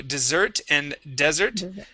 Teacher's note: Both of them have the voiced S sound.